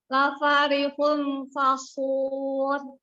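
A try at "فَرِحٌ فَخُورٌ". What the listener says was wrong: Iya, tapi nggak dengung jadinya. Yuk diulang lagi.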